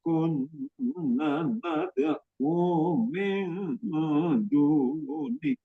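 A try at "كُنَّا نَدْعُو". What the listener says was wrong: Kunna, na-nya 2 harokat. Tadi hilang 2 harokatnya.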